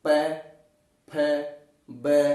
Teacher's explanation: इनका उच्चारण होठों के प्रयोग से किया जाता है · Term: ओष्ठ्य वर्ण